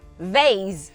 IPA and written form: veɪs (vase)